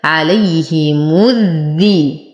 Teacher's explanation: وأنتقل من ضمة الميم إلى تشديد الذال